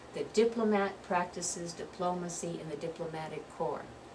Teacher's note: diplomat the first syllable diplomacy is the second syllable and diplomatic is the third syllable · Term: stressed syllables